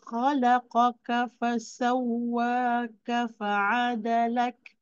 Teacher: bila kita ada Kaf di hujung tu mesti ada sedikit anginlah